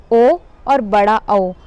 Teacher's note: ओ और बड़ा औ ये दोनों कंठ और ओष्ठ दोनों से मिलकर इसकी ध्वनि निकलती है, तो इसका उच्चारण स्थान हो गया कंठ और ओष्ठ। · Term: कंठोष्ठ